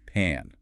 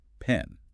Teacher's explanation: To say pan, you must drop your jaw low. Pan. Try it out and feel your jaw drop. Pan. But to say pen, you keep your jaw slightly higher.